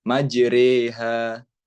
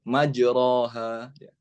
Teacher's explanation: ada kalanya Alif itu dibaca agak miring sedikit ke huruf Ya seperti majreha Bukan majroha tapi dibacanya miring sedikit ke huruf ya